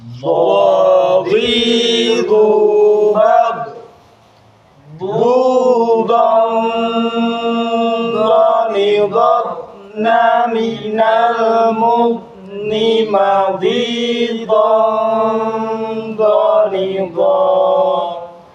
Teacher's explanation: huruf dot sisi lidah ketemu dengan geraham kanan dan kiri